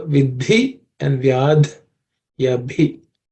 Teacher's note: bhi is also an aspirated consonant. It's the fourth letter in the pa varga or pa class of consonants.